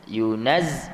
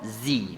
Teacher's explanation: bila nak sebut dia yunaz bunyi yang mati dulu, naz. Kemudian yang kedua zi, baru bunyi yang berbaris. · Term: sabdu